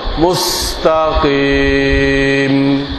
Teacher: কপ মোটা, কিন্তু কপে যখন জের হয় তখন মোটার পরিমাণ কম হয়ে যায়।